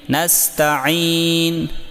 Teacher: یہاں پر سین ساکن میں سیٹی کی آواز یعنی صفیر واضح کریں، صفیر کہتے ہیں سیٹی کو، اور عین کو حلق سے نکال کر یا کو لمبا کریں، یعنی نستعین۔